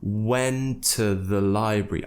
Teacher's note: And the next word begins with a T. So we're actually just going to pronounce one T, kind of merge them together